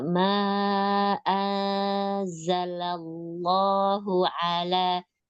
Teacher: Kalau ala itu kan hurufnya A-nya itu tipis, hati-hati ke tebal.